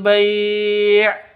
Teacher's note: bai panjang boleh dua, boleh empat, boleh enam ketukan karena mad lin